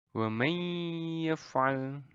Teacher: Jadi kalau ada nun mati dan tanwin itu bertemu dengan mim, nun, wawu, ya, maka itu akan menjadi idgham bi gunnah atau bacanya dengan meleburkan lalu disertai dengan dengung